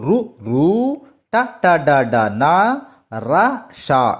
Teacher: నాలుకతో గట్టిగా అంగిలిని తాకుతూ పలికే అక్షరాలు ఋ ఋ ట ట డ డ న ర ష ఇవి మూర్ధన్యాలు